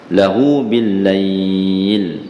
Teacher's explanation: Maksilah qasirah. Jadi hu tu kita baca 2 harakat.